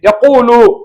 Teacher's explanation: யகூலு என்று சொல்லும் பொழுது கால அளவுக்கு வாய் நிரம்ப முடியாது. ஏன்னா வாய் நாம் உதட்டை குவித்து விடுகிறோம் இல்லையா. யகூலுல இஸ்திலாவுடைய எழுத்துக்கள் லம்மு பெறும் பொழுது அந்த அளவுக்கு தஃஹீம் வராது.